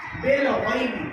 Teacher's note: غین کے ساتھ یا حرف نیم، آواز نرم ہو اور معروف پڑھا جائے ، نرمی کے ساتھ جلد ادا کیا جائے، بالغیبی کے بعد